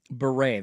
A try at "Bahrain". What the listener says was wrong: Bahrain? There is an I-N at the end. I think it is Bahrain is how it's pronounced. Bahrain.